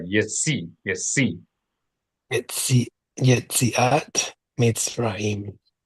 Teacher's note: And the letter Saudi, make sure you do it as a TS or as a plosive emphatic S, but not as an SH